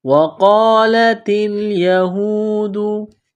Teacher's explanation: واو کو پڑھتے وقت ہونٹوں کو گول کرنا ہے۔ نقطوں والا قاف ہے، اس کو موٹا کرنا ہے۔